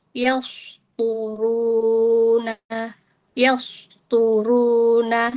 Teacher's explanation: Jadinya dia terbaca tipis karena mahrojnya dia berada di huruf sin dan terdengarnya tipis. Kemudian huruf sinnya dibaca tafkhim atau tebal.